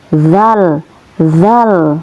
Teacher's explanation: tempat keluarnya yaitu dari ujung lidah yang menyentuh gigi atas antara gigi atas dan ujung lidah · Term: huruf dalal